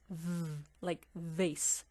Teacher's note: we make the humming sound kind of through our teeth that creates a vibration on the lower lip